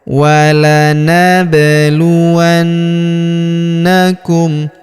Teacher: Kemudian berikutnya walab huruf ba berharakat sukun kita pantulkan atau kita qalqalahkan.